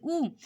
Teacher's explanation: जैसे आप ऊ को बोल के देखिए, ऊ यानी हमारी जीभ तालु से नहीं टकराती ऊ में, तो ये होंठ का हो गया, जिसको बोलने में हमारे होंठों का यूज होता है, जीभ को इधर उधर नहीं हिलाना पड़ता है।